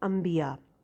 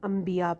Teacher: اردو زبان میں بھی جب کبھی بھی نون کے بعد با آ جاتا ہے تو ہم نون کی آواز کو میم سے بدل دیتے ہیں اور اس کو میم پڑھتے ہیں. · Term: اقلاب